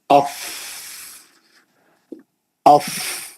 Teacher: नीचे का होठ ऊपर के दो दांत सामने वाले जब वो बैठ जाएंगे नीचे के होठ पे वो उसका मखरज । तो पीछे से जो हवा आप प्रेशर से ढकलेंगे तो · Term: फ का मखरज